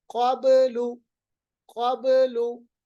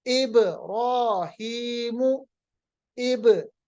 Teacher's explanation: बा की आवाज वापस आती है जब बा पे जज्म होता है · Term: कलकला